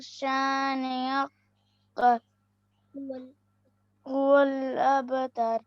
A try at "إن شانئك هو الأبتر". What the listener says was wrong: یہاں پر اس کو نا کھینچنا نہیں ہے بلکہ ہم نے غننے کے ساتھ پڑھنا ہے، کیونکہ نون مشدد ہے. نون مشدد کے بارے میں یہ بتایا تھا نا کہ نون مشدد پر غنہ ہوگا. کاف کو کھینچنا نہیں کاف کو بغیر کھینچے ہوئے پڑھیں گے. ان شانئک، کیونکہ اوپر زبر ہے نا، زبر کو بھی اسٹیپ نہیں کیا جائے گا.